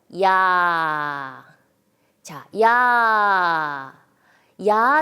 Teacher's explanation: 입모양이 약간 변하고 끝에 아 로 끝난다는 것을 모두가 인식할 수 있습니다